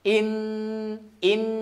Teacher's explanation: Terlebih lagi ya ketika bertalaki ya, ketika di setorkan bacaannya kemudian dikoreksi ada dengung ke hidung, maka itu harus dikoreksi ya, atau diperiksa lagi ya. Innahu, jangan sampai ada suara hidung atau ada dengung ke hidung. Hu murni dari ha pangkal tenggorokan ya, dari pangkal tenggorokan.